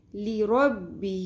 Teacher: ہا کو اقصی حلق کے آخری حصے سے نکالنا ہے. اس میں ہا سانس کی آواز نہیں آنی چاہیے.